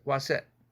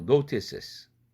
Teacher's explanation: 스스가 겹치니까 중복자음 탈락 현상으로 스 하나만 남죠